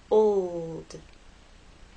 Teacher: the o to the L and finally into the D old it's important to make the L long enough so that it's heard